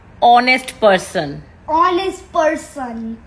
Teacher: The H is silent, so the honest person.